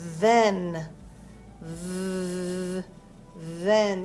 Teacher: Your teeth are on your tongue to make that TH sound. It's what we call a voiced sound, in that you're making a noise while you're saying the sound. not just the air.